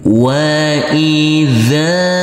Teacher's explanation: huruf zal dibaca panjang dengan panjang 2 harokat. Karena huruf zal ini, huruf zal berfathah bertemu dengan huruf alif yang tidak berharokat.